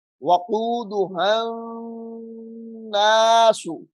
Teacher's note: نون مشدد ہے غنہ ہوگا.